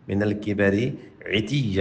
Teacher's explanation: عین کو یہاں پہ واضح کریں، حلق پہ زور دے کے